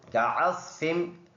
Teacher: फजअलहुम हा सीने से अदा होने वाला है और कअस्फिन आइन साफ अदा करना गले से। सौद मोटा वर्ड है, मुंह भरकर पढ़ेंगे